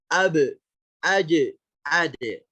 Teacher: Cuman ingat huruf qalqalah ini khasnya adalah adanya hentakan, dihentak.